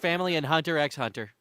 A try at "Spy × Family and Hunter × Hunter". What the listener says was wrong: You're not supposed to pronounce the X.